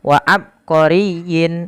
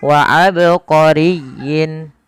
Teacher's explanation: Qalqalah artinya memantul maka tatkala kita membaca ba di sini harus dipantulkan kesalahan yang terjadi adalah tidak memantulkan huruf ba contoh wa abqorin